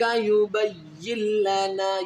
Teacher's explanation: یہ نون ساکن اس کو نہیں پڑھیں گے، یا کو اس لام کے ساتھ ملائیں گے کیونکہ لام کے اوپر شد ہے